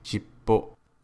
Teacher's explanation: the P sound is pronounced at the end of the first character and is pronounced shippo. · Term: double consonant sounds